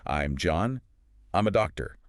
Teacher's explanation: If you want to sound confident and effortless, you need to master that falling intonation. You need to land the plane at the end of the sentence.